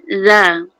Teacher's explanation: Za nipis keluar lidah, jangan tak keluar supaya mahrajnya nipis kan.